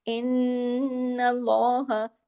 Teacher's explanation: نون پہ تشدید ہے، بڑا غنہ ہوگا. ان اللہ، اللہ کے نام سے پہلے زبر ہے، لام ہیوی بھی ہوگا.